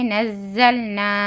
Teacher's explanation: مما نزلنا نون زا زبر نز زا لام زبر زل نزل سیٹی کی آواز آنا زا میں